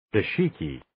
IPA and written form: 'dɑːʃɪkiː (Dashiki)